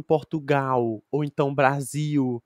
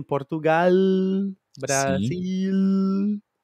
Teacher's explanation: de Portugal que é mais parecida ao espanhol por exemplo que eles pronunciam a letra l no final de uma sílaba como o espanhol